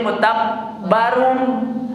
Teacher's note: Karena di situ ada tanwin yang harusnya suaranya run, mutabbarun, dibacanya jadi mutabbarum. Diidgham namanya dilebur suara nunnya ke suara mim. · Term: idgham bi gunnah